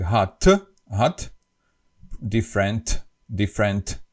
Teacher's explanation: in Slovak we always pronounce the last T